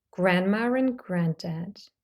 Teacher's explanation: Grandma ends with a long A. We have a R and an A or a schwa. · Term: intrusive R